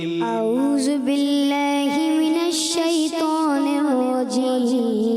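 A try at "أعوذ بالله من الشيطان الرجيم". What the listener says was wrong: زال کی ادائیگی میرے بچے، زال یہ کلیئر کرنا ہے. اعوذ.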